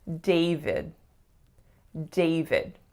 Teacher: Two syllables. The strongest is the first, and the sound that that vowel makes is A. So a lot of my clients see the letter A, so they tend to make more of a sound.